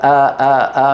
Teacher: من اقصى الحلق وقريب من العين العين من وسط الحلق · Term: الهمزه